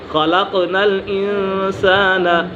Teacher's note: قاف کے اوپر قلقلہ ہو رہا ہے